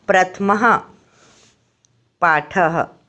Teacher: विसर्गों से कौन सी आवाज़ निकलती है, ह की आवाज़ निकलती है